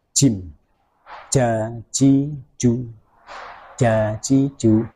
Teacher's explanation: Huruf jim itu makhrajnya berada di tengah lidah, kita tempelkan ke tengah langit-langit atas. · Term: makhraj huruf jim